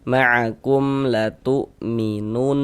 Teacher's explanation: Maka kita baca jelas mim sukunnya, kemudian tidak didengungkan, baca pendek saja. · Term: idhar syafawi